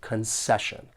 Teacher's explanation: there are three syllables and the stress is on that second syllable